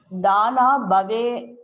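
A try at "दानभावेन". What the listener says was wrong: No. Not There is no dhana. You are making a short vowel to a long vowel and long vowel to a short vowel. Dana bhavena. You understand the mistake?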